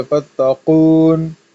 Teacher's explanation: تا کو نرمی سے پڑھنا ہے، ٹھیک ہے، اور قاف کو سختی سے